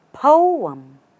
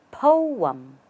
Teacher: Raise your stress on po and bring it down on the second part.